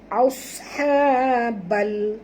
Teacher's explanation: Okey, alif lam qamariyah, jadi bunyikan lam yang mati ni tanpa lantunan.